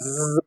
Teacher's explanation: so in the case of ज you will feel the vibration आपको vibration feel होगी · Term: वॉइस साउंड